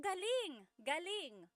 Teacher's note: if the emphasis is on the second syllable, galing, that means good or great or excellent.